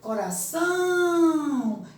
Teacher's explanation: são é a sílaba tônica. Então, irá são sílabas átonas.